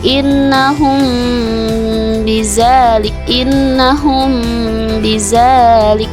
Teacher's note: tajwid yang terjadi ketika hukum mim mati bertemu dengan huruf ba hukum Ikhfa Syafawi ini tetap wajib dibaca dengan dengung sekitar 2 sampai 3 harokat · Hukum dari ikhfa safawi yaitu dengan cara menahan huruf hijaiyah mim secara sama-samar. · ketika akan bertemu dengan huruf hijaiyah ba, maka bibir atas dan bibir bawah dalam posisi yang tertutup